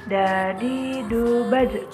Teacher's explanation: Huruf da keluar dengan cara menyentuhkan ujung lidah kita ke gusi bagian atas. Sebagaimana kita melafalkan huruf ta dalam keadaan mati, huruf da terdengar suaranya memantul.